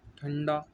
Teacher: अनुस्वार में वायु नाक से निकलती है सिर्फ, ठीक है। ठंडा, अन ऐसे करके न की आवाज़ आ रही है।